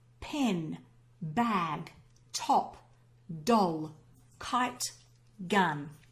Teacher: when we pronounce them there's a little stop or an explosion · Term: plosives